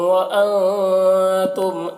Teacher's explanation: نون میں اخفا ہو رہا ہے اور میم میں اظہار شفوی ہو رہا ہے۔